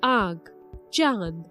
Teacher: इसका उच्चारण नाक और मुंह दोनों के सहयोग से किया जाता है इसे स्वरों से प्रथक नहीं किया जा सकता जिन वर्णों की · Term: अनुनासिक